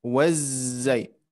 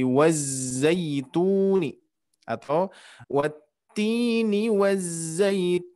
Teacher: huruf zai dia mempunyai sifat sofir, yang mana sofir ini mempunyai desisan